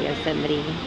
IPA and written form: joʊˈsɛmɨti (Yosemite)